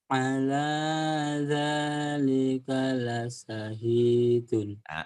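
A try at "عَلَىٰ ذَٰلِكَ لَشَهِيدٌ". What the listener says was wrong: Tinggal shinnya hutang kamu ya. La sya. Hutang shin.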